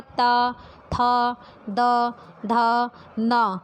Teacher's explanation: इन सभी का उच्चारण करते पे हमारी जीभ जो दांत से टच होती है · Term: दंतव्य